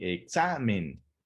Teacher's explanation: Sabemos que la sílaba tónica se encuentra en la penúltima sílaba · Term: palabra grave